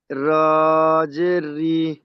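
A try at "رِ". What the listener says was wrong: রি টান হয়ে যাচ্ছে, র জের রি। সিন কলিফ টান অক্ষর, তিন আলিফ টান দিয়ে পড়ুন।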